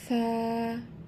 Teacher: এক আলিফ টেনে এবং একটু নরম করে পড়তে হবে